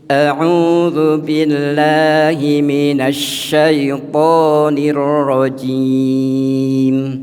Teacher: pengucapan huruf disertai menyebarnya angin di dalam mulut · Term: tafasyi